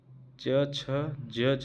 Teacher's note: च, छ, ज, झ और इया का उच्चारण जीभ के तालु से स्पर्श करने पर होता है। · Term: तालव्य